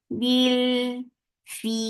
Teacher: temporary sukoon has turned this 2 counts long vowel into 4 counts. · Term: madarid sukoon